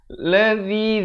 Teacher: zi di hujung lidah, baca 4 atau 5 harakat